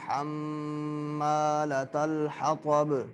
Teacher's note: میم مشدد ہے غنہ کریں